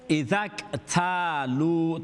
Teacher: ta's going to be long alif madda, lam's going to be long waw madda.